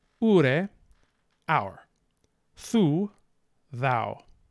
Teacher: long u in THU in Old English is generally going to come down into Modern English as ow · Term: Great Vowel Shift